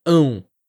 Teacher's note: o ã nasal seguindo de um som de U, logo depois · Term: ditongo ão